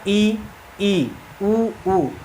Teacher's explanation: पूरा मुंह नहीं बंद हो रहा है, लेकिन लगभग हमारा मुंह क्या हो जाता है? बंद हो जाता है। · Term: समृद्ध स्वर